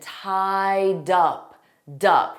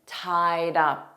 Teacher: We're going to take that D sound from tied and we're going to put it on the preposition up. So it will sound like tied up.